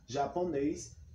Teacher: Qual é a palavra oxítona? Que a sílaba tônica, a sílaba mais forte, é na última sílaba